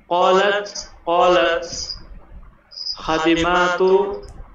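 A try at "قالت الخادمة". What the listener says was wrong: জি একসাথে পড়লে হবে, ক্বালাতিল খাদিমাতু,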